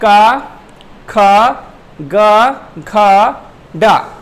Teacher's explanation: इनका उच्चारण स्थान है कंठ। कंठ इनका उच्चारण स्थान है। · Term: का वर्ग